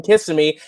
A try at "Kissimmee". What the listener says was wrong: You put the emphasis on the wrong syllable. It's just Kissimmee, not Kissimmee.